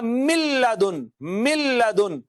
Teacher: نون کا لام میں ادغام کیا تو یہ ہو گیا ملدن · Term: ادغام بلا غنہ